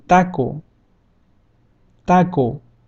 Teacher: The vowel O in English sounds very similar to the one in Spanish, but we just need to remove the little U sound to the end. And we have O, O, as in taco, taco.